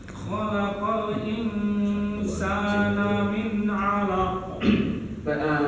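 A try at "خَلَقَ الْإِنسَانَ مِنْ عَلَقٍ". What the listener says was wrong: Nah kalau lam di sini jangan terlalu cepat. Khalaqal kan mengalir tuh. Jadi bukan khalaqal mengalir.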